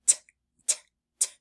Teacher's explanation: the t sound is not voiced. So when we make that sound, we don't feel any buzzing.